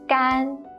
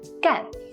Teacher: When it means dry, it's the first tone. 干. When it means to do, it's the fourth tone.